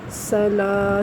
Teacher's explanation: سین زبر سا، لام کھڑی زبر لا، سلا۔ سین میں آپ نے سیٹی کی آواز پیدا کرنی ہے۔